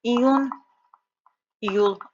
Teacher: Bunlarda vurğu sona düşür.